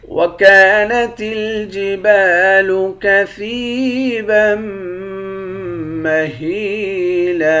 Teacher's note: سا کو یا کے ساتھ ملا کر یا کو ایک الف کی مقدار کھینچ کر پڑھیں گے، با کو میم مشدد کے ساتھ ملا کر میم پر غنہ کریں گے، ہا کو یا کے ساتھ ملا کر یا کو ایک الف کی مقدار کھینچیں گے، یا حروف مدہ ہے۔